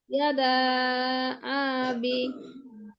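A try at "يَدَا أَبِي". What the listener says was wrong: আবি, টান নেই, এদা আবি, মাদের তাবেই।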